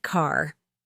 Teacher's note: American accent often uses a strong R sound.